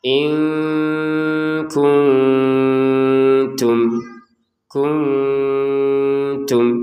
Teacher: Nun sukun bertemu ta dibaca dengan samar. Samar juga ya.